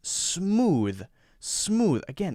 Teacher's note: Notice there's no space between the S sound and then the consonant sound that follows it. No space. That's extremely important.